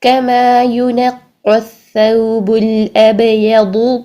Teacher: اب منہ بھر کے ادا کریں گے. زبان کی جو سائڈز ہیں ان کو اوپر کی داڑوں کے ساتھ لگائیے اور موٹا کر کے ادا کیجیے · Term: ضاد